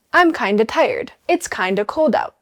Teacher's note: The D softens and the of disappears completely.